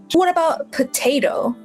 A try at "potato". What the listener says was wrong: Now, you say it with a D. You've got potato. But we actually open up and we have the potato with a T. So it's a potato. You say it with a D at the end. Yeah, well, the D and the T in phonetics is often confused.